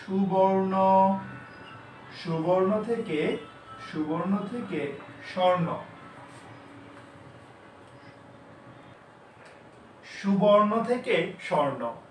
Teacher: বাদ পড়েছে আসলে এই যে বয়ের সাথে যে অটা ছিল মাঝখান থেকে, এইটা বাদ পড়েছে। তাহলে সুবর্ণ থেকে স্বর্ণ, স্বরধ্বনি লোপ পেয়েছে, তাহলে এটার নাম হলো স্বরলোপ।